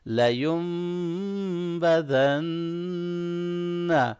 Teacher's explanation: لین نون نہیں پڑھیں گے بلکہ لیم میم پڑھیں گے، نون کی آواز کنورٹ ہو جائے گی میم کے اندر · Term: اقلاب